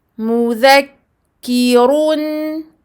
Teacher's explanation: Donc le run à la fin est emphatique.